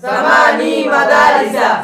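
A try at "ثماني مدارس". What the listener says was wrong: সামানি টান হবে, ঠিক আছে?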